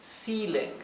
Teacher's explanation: ceiling se pronuncia con una I larga